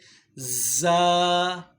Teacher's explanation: زبان کا پش والا کنارہ جب اوپر مسوڑوں کے ساتھ ٹچ ہوتا ہے تو یہاں سے را ادا ہوتا ہے. زبان کی نوک اور اوپر نیچے کے جو دانت ہیں جب یہ آپس میں ملتے ہیں تو یہاں سے زا ادا ہوتا ہے